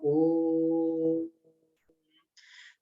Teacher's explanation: ओ को 3 गुनी क्षमता के साथ में थोड़ा लंबी आवाज में इसको बोला जाता है, ओ। तो फिर इसके बाद में फिर ये आधा म के साथ में, ये आधा म जो अनुस्वार है, इसको अर्ध बिंदु अर्ध अनुस्वार बोलते हैं, उसके साथ में खत्म किया जाता है।